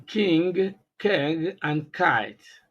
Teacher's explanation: the consonant K is a voiceless velar plosive sound